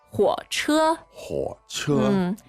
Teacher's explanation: the tones are third and first. third and first.